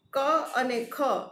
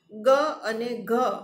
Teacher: ક અને ખ અઘોષ, ગ અને ઘ ઘોષ વ્યંજનો